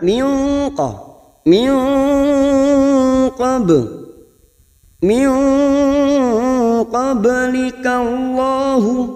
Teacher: Nun sukun bertemu dengan huruf qaf, aqsal lisani fauqu, pangkal lidah atas menempel ke bagian yang lunak. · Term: ikfa hakiki